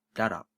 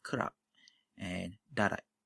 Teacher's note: consonants like B, P, T, and K at the end of the words are unreleased. What I mean by unreleased is that you do not let go of that sound at the end.